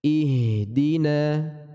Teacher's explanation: huruf hak dari pangkal tenggorokan dan dia sifatnya tipis maka ringan pengucapannya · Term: huruf H sukun, ha sukun